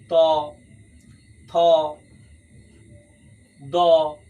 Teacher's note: দাঁতের মাধ্যমে যে সমস্ত ধ্বনিগুলো বিশেষত উচ্চারিত হয় সেগুলোকে আমরা বলতে পারি ত, থ, দ প্রভৃতি ধ্বনিগুলো কিন্তু দাঁতের সাহায্য ছাড়া উচ্চারিত হতে পারে না।